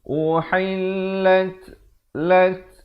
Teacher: ada bunyi hamasnya, bunyi angin.